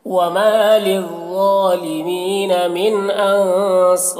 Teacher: ان کے نون میں اخفا ہوگا اور صاد کو پر پڑھیں گے اور یہاں پر الف مدہ ہے اور یہاں پر جب وقف کریں گے تو را کا زیر سکون سے بدل جائے گا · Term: مد عارض وقفی